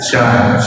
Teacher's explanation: Dan di mana-mana orang itu billahi Syin itu ada sifat namanya tafasyi. Tafasyi itu angin di atas lidah, artinya angin kencang di atas lidah.